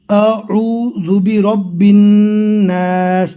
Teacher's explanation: نون میں گنہ کریں گے اس لیے کہ نون کے اوپر تشدید ہے